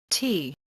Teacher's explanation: In order to produce an American T sound, the tip of your tongue needs to touch on the bottom ridge of your upper gums, unlike the tip touching in the center of your upper hard palate, like for the Indian T sound.